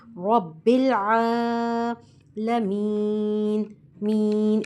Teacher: रबिल आलमीन रब्बुल आलमीन रब्बिल यहां पर भी लाम में हमने कलकला से बचना है रब्बिल आल नहीं पढ़ना ठीक है यहां रब्बुल आलमीन आ नहीं है ये ये ऐन है ऐन आइन की अदागी हमारे हलक से होती है हमारे हलक में आइन और ह पढ़ते हुए प्रेशर सा फील होता है